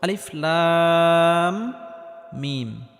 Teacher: লাম, এখানে লামটি 4 আলিফ পরিমাণ লম্বা করে টানতে হবে, কারণ কোনো হরফের উপর যদি মোটা চিহ্ন থাকে তাহলে সেই হরফটি 4 আলিফ পরিমাণ লম্বা করে টেনে পড়তে হয়। এই লাম হরফটি 4 আলিফ পরিমাণ লম্বা করে টানার পর মিম হরফটির সাথে গিয়ে লাগবে, কারণ মিমের উপর তাসদিদ রয়েছে। আর মিমটি গুন্নাহ করে পড়তে হবে, কারণ মিমে বা নুনে তাসদিদ হলে গুন্নাহ করে পড়তে হয়। · শুরুতে আলিফ, এই আলিফটি কোনো টান হবে না। লাম, এখানে লামটি 4 আলিফ পরিমাণ লম্বা করে টানতে হবে, কারণ কোনো হরফের উপর যদি মোটা চিহ্ন থাকে তাহলে সেই হরফটি 4 আলিফ পরিমাণ লম্বা করে টেনে পড়তে হয়।